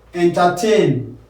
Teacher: where you have entertain, tain stressed